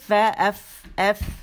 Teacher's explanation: سامنے کے جو 2 دانت ہیں وہ نچلے جو ہے ہونٹ, ٹھیک ہے, ہونٹ کا جو پیٹ ہے نا وہاں پہ جا کے جو گیلا حصہ, فا بولیں, فا, ایف, ایف. سامنے کے اوپر کے 2 دانتوں کے کنارے جو ہیں وہ نچلے جو ہونٹ اس کے پیٹ پہ لگیں گے, ایف, نرمی کے ساتھ, فا, ایف, اور ہوا نکلتی ہوئی آپ کو محسوس ہوگی.